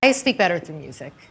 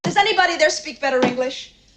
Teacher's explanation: It just happens because the tongue taps quickly between two vowels and that T turns into a D like sound. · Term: soft D sound